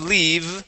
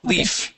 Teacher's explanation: instead of leave we're going to pronounce the F